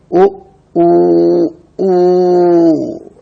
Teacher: अब ऊ है लेकिन उ ह्रस्व, ऊ दीर्घ, ऊ प्लुत, ये मुर्गे के बोले में आप देखते हैं। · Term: ह्रस्व, दीर्घ और प्लुत